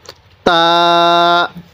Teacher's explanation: জিহ্বার আগাটা উপরে মালির দাঁতের সাথে লাগিয়ে দিব তাহলে তাটা সহি উচ্চারণ হবে